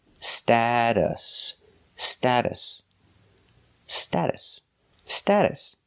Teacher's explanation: the second syllable is pronounced with a relaxed uh uh like cup and up